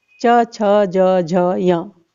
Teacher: चवर्ग, च छ ज झ य। इनका उच्चारण स्थान तालु है और इन्हें हम तालव्य व्यंजन कह सकते हैं।